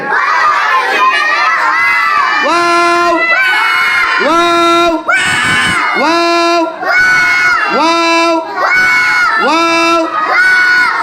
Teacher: দুই ঠোঁট গুল করে সামান্য ফাঁকা রেখে ওয়াও হরফটি উচ্চারিত হয়